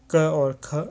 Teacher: क और ख ये कंठ्य ध्वनियाँ होंगी